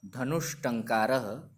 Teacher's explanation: पहले आए हुए स के जगह पे परिवर्तन होकर के मूर्धन्य श हो जा रहा है